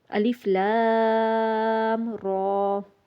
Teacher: فوراً سے لام کے بعد فوراً سے را کو پڑھ لینا ہے، اس کے درمیان رکنا نہیں ہے، غنہ وغیرہ کچھ بھی نہیں کرنا